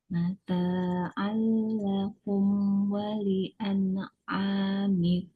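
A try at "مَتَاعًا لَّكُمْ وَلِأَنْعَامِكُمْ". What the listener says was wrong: Kasih percikan angin pada kaf. Kalau enggak, jadi seperti huruf K Indonesia. Lakum wali an'amikum. Lakum wali an'amikum. Dan an'a tanpa mantul.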